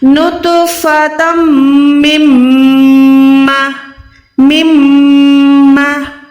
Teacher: नून साकिन के बाद दूसरी मीम है, यहाँ पर भी आपने इद्गाम करना है, यानी यहाँ पर भी आपने मीम को दूसरी मीम के साथ मिला के लेकिन गुन्ना भी करना है, नून को नाक में ले जाके गुन्ना करना है